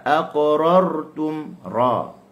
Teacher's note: sifatul lazimah yang ada pada huruf ra adalah sifatul takrir, sifat takrir, sifat getar.